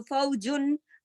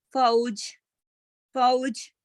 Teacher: جب ہم ملا کے پڑھتے ہیں یعنی وصل میں پڑھیں گے تو تنوین پڑھی جاتی ہے۔ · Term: نون تنوین